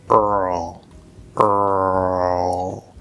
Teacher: What we do here is a half l vowel sound, which you can see on my vowel chart here. So this is actually an l colored er vowel